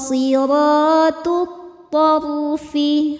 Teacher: alif lam tidak dibaca masuk langsung ke th atau disebut idgham syamsi